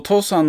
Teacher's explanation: So Otou-san, the first O is just a short, normal O. And the second O sound is long